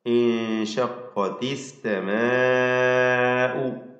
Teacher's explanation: ഇൻഷഖത്തിസ്സമാഉ, സമാഉ അല്ല, ദീർഘിപ്പിക്കുന്ന ആ ദീർഘത്തിലും തർക്കീഖാണ്, അലിഫിന് തർക്കീഖ്. അസ്സമാഉ, ഇതിൽ നാലോ അഞ്ചോ ഹറക്കത്തിൻ്റെ അളവിൽ ദീർഘിപ്പിക്കൽ നിർബന്ധമാണ്, മദ് മുത്തസിൽ വാജിബ്.